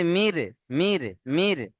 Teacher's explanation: ঠোঁট গোল হচ্ছে কি, গোল হবে না, এটা বারিক, এটাকেই বলা হয় বারিক।